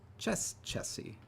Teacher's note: it's the off syllable in the reduplicate that gets eroded